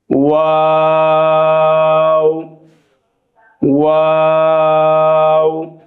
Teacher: ওয়াও এর মাখরাজ দুই ঠোঁট হইতে উচ্চারিত হয়, কিন্তু ওয়াও বলার সময় শুরুতেও যেভাবে গোল থাকবে শেষ অংশেও সেভাবে গোল থাকবে